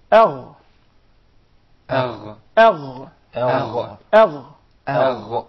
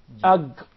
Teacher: the ghain comes from the closest part of the throat to the mouth